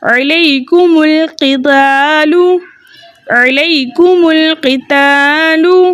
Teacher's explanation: اسے جائز کرنے کے لیے اجتماعی ساکنین فی کلمتین کے دوسرے طریقے کے مطابق ہم نے جمع کی میم کو پیش دیا۔ · حمزۃ الوصل درمیانی کلام میں آنے کی وجہ سے حذف ہو گیا۔ اب ہم جمع کی میم کو لام ساکن سے ملا کر پڑھیں گے۔